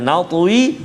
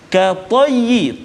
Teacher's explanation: Lepas tu kita jumpa pula katayyi, ta yang berbaris fathah, ta yang berbaris di atas, maka berbezalah tingkatan ketebalan dia. Yang qalqalah ataupun yang mati ataupun sukun itu kuranglah sedikit berbanding dengan ta yang hidup barisnya pada atas.